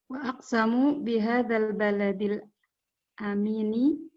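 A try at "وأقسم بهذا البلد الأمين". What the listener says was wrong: Berarti wa aksama ya? Bukan aksamu. Aksama bihadzal baladil amini.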